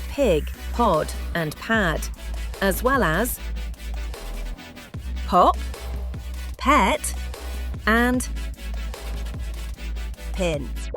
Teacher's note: We make the sound by putting our lips together and pushing out a short, gentle pop of air.